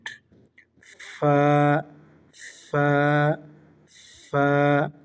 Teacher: ফা উচ্চারণের স্থান হচ্ছে সামনের উপরের দুই দাঁতের আগা এবং নিচের ঠোঁটের পেট